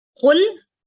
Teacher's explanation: कुल कहो, कौफ मदमूम है लेकिन और ये हरूफ हलकी भी है, एक गले से निकलना है और उसके अलावा उसको हमने मोटा भी पढ़ना है। कौफ को आप काफ पढ़ेंगी तो उससे भी माना बदलेगा।